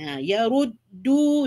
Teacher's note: du di sini dua harakat ya, iaitu mad asli dua harakat